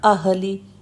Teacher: ہا ساکن ہے تو اس کو جھٹکا نہیں ہم نے دینا